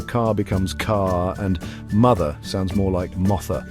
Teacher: The letter R is a dead giveaway. Brits often drop it at the end of words